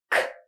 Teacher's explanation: Your tongue is up there and you're going to push out some air, and you're going to push out a little bit more air because it's final. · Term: final K sound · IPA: /k/